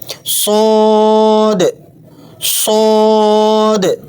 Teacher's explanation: صاد، صاد موٹی سیٹی کے ساتھ بھاری آواز میں پڑھیں